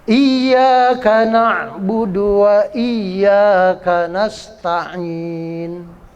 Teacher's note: Iyyaka na'budu, na ain ya, jangan kana budu tapi kana ain. Ain itu bunyinya di tenggorokan di atas, kayak apa ya, kayak orang kalau nyuapin anak itu gitu ya.